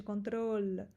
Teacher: E esse L também. Esse L é a língua atrás dos dentes da frente, control. E tua língua faz uma curvaça, assim, ela faz assim, control, tá?